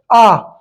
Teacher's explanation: Full open मतलब आपका हो गया विवृत। ठीक है, आ।